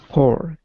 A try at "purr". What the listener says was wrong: So see how the U, it's not like the U sound, right? It's not pour, right? It's purr.